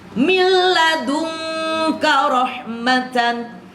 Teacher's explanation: milla jangan 2 ketukan dan tidak dengung.